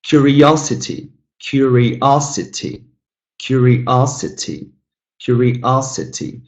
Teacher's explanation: 5 syllables, but the third one is stressed.